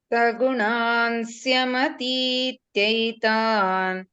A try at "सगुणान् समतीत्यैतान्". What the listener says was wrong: Sagunan samati. I heard a sya. Sagunan samati jaitan.